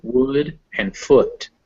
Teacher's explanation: the relaxed ooh as in wood and foot